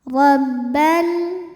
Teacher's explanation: Ro dibunyikan secara tafkhim karena berbaris fathah, maka ro dibunyikan dengan tebal.